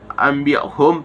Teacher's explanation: terdapat iqlab karena nun sukun bertemu huruf ba. Cara membacanya didengungkan.